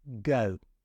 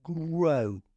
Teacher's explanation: notice your lips are right back against your face go but we put an r in and our lips have to go forward